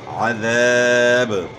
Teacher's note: عین کی آواز گلے کے درمیان سے نکالنی ہے. ذال کو اپنے مخرج سے ادا کرنا ہے، یعنی زال نہیں پڑھنا، ذال پڑھنا ہے · الف مد ہے، الف سے پہلے زبر ہے، تو زبر کو آپ نے کھینچنا ہے تاکہ الف پڑھا جائے